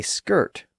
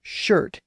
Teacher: the Anglo-Saxons had converted that ska sound into a sh sound